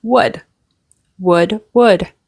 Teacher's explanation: be careful the L is not pronounced